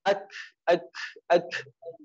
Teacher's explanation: pangkal lidah ditempelkan ke langit-langit tapi agak rendah lagi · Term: Kaf